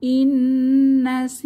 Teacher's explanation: নুন সাকিনের পরে যে নুন এসেছে তাহলে ইদগম ইদগুন্নাহ মিলিয়ে পড়ব তাহলে ইন্নাসিনা সিতে এক আলিফ টান হবে জেরের বাম পাশে যজমলাইয়া